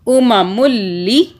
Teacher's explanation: یہ لام کے اوپر تشدید ہے، لام کی 2 مرتبہ آواز بنے گی، ایک لام کی چھپی ہوئی پچھلے میم کے ساتھ، دوسری لام کی آواز نیچے زیر کے ساتھ لی، ٹھیک ہے.